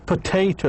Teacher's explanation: the stress falls in the second syllable